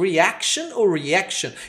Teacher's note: Esse A é entre o A e o E. O americano puxa mais pro E, o britânico puxa mais pro A.